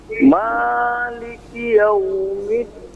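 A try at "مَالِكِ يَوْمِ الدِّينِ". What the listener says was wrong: Sekali lagi, jangan terlalu panjang. Jangan tapi maliki. Pendekkan lagi.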